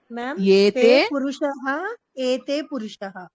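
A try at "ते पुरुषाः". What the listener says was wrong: పురుషాహ వస్తుంది. పురుషః అంటే ఒక్కడే కదా. అది ప్లూరల్. తే అంటే ప్లూరల్ కదా.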